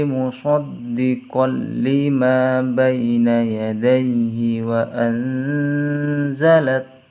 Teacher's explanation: ada huruf nun sukun bertemu dengan huruf za maka harus dibaca samar, dinamakan ikhfa hakiki. Wa anzalat taura, ronya ada harokat fathah berdiri jadi harus dibaca panjang.